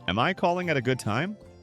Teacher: tone slightly rising, soft and gentle, shows respect and allows the other person to say no if they're busy.